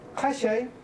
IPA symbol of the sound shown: š